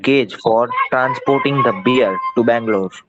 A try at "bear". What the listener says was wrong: Beer નથી હો. Bear.